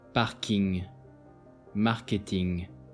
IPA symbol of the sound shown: ŋ